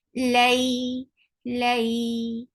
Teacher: This is harfi, and you have to give very nice sound fatha. uh, give a little longer time, attach with ya, and that will take a time too. So it will take 2 counts long.